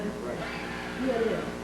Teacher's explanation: This is produced by the top teeth touching the bottom lip. The air vibrates through the teeth and the lip. There is no tone.